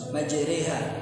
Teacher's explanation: Harakatnya bacaannya antara fathah dengan kasrah. Jadi pertengahan. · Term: imalah